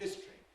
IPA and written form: ˈhɪstri (History)